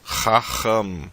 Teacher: Começa com a letra RET, som do RR raspado na garganta